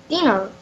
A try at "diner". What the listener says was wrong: Only one N.